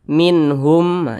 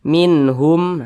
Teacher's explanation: Maka nun sukun berjumpa dengan huruf H, hukumnya adalah izhar halqi. Dibaca jelas, tidak berdengung. Jadi dibaca pendek saja.